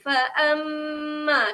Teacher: huruf mim yang bertanda syaddah perlu dengung di sini. Okey, dia jadi hukum dia wajibul gunnah.